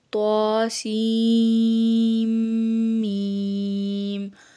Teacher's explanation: طا، سین، میم میں سین کے نون کو میم سے بدل کر دونوں میموں کو ایک کر کے غنہ سے پڑھائیں